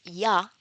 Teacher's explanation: In the palatal sound, which is ya, as in you, the tongue is raised, the front part of the tongue is raised, and it approaches the hard palate